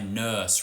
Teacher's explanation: where it's central and raised and maybe a bit fronted and rounded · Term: the nurse vowel